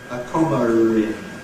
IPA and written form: ə ˈkɒmər ɪn (comma in)